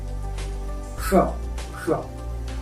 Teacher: उष्म व्यंजन मतलब ऊष्मा निकलती है, गर्म हवा निकलती है बाहर की ओर, तो इसे हम उष्म व्यंजन कहा जाता है। जैसे श का उच्चारण यदि हम जब करेंगे तो हमारी जीभ जो है अंदर की ओर, ऊपर की ओर मुड़ी हुई रहती है। श और जब ये षकों का श को हम उच्चारण करते हैं तो हल्का सा थोड़ा सा खुलता है श।